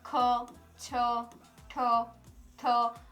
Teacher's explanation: ઉચ્ચારણ કરતી વખતે શ્વાસ વધારે ઘૂટાય તેને મહાપ્રાણ વ્યંજન કહે છે